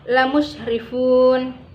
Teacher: Selanjutnya lamusrifun mat arid lisukun, karena ada wakaf yang sebelumnya ada huruf mat tabi'i, cara membacanya boleh panjang 4 harakat atau lebih dan juga boleh 2 harakat